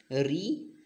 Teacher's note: स्वर का री का उच्चारण मूर्धा से होता है